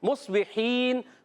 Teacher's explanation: دونوں ہونٹوں کے خشک حصے سے میم ادا ہوتا ہے، ٹھیک، اور حرکات کو بغیر کھینچے، با کے نیچے زیر ہے، با ادا ہوتا ہے دونوں ہونٹوں کے تر حصے سے۔ مصبحین، ہا ادا ہوتا ہے حلق کے درمیان والے حصے سے